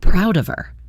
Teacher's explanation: The phrase proud of her is interesting. In fast casual speech, the H in her is often dropped when it's unstressed.